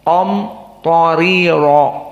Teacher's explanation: Qaf mufakhomah, ta mufakhomah, dan ro di akhir mufakhomah. Adapun ri tidak mufakhomah.